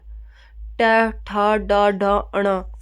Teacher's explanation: फिर ट वर्ग बोला जाता है हमारा मूर्धन्य से।